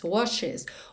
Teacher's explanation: O E realmente faz a ponte entre o SH e o S.